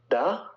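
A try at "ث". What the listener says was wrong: No, this is Tha. No, that's Tha with like the Tha. TH. No, that is Dal. Dal is pretty more like this side.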